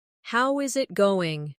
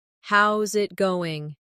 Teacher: The is disappears and the final G in going often softens. This is called connected speech.